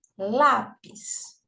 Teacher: Veja, a sílaba mais forte é o lá, né, que é a penúltima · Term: paroxítona